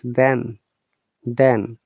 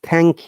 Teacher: th voice them then but when it's thank you that is unvoiced